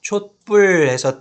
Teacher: 촛불해서 디귿 소리가 갑자기 어디선가 덧나 있는 것을 볼 수 있고, 뒤에 그 뿔이라고 쌍비읍 된소리가 나죠. 이렇게 뒷말에 첫 소리가 된소리로 나는 경우.